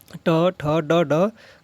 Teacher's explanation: ट ठ ड ड का उच्चार स्थान कहां से होता है मुर्धन्य से होता है